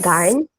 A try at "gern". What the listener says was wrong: Gern. Yeah, you all use it a little dark. You all say gern, but it's gern. It's more brighter.